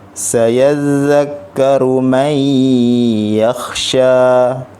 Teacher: Nun mati dia jumpa dengan huruf ya, dia gabungkan terus dengan berserta dengan dengung. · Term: idgham ma'al gunnah